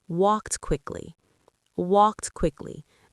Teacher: The T blends into the next word.